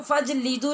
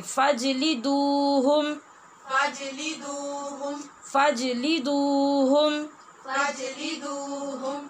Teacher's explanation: फिर वाव मद्दा है ना दाल के पेश के बाद, तो इसको लंबा करके ही पढ़ेंगे